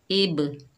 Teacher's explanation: तो हुरूफ़े कलकला के 5 हुरूफ़ों में से हरफों में से बा आ रहा है, वो भी साकिन हालत में है, तो यहाँ पर कलकला होगा कलकला सोरा, क्योंकि ये तिलावत के दौरान आ रहा है, ये छोटा कलकला होता है, डबल साउंड आएगा, तो इसको अदा करते वक्त डबल साउंड आएगा, जुम्बश पैदा होगी।